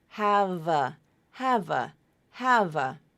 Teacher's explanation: Have, v, v. So allow that V sound to continue over to the beginning of the next word. Have a, have a. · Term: consonant to vowel link